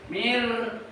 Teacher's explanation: takrir itu artinya bergetar dari punya lidah